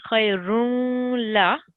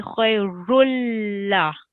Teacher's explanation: So if it is a la mushaddid, that means there is no nasal sound. You're going to merge this run straight into the la mushaddid.